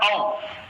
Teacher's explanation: वाव की आवाज जो है मुंह के अंदर खाली जगह से आ रही, इसके अदा करने में जुबान हमारी कहीं लग नहीं रही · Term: हुरूफे हवाइया